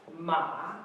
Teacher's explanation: The pronunciation is ma, as we see here. Ma, the third tone